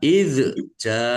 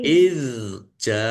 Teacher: zal sukun bukan kolkolah, jangan dipantulkan. Jangan dibaca izja, tapi dibaca izja'a.